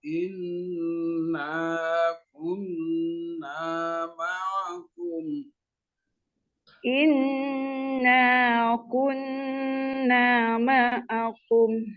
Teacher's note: Naknya ada alif panjang 2 harakat.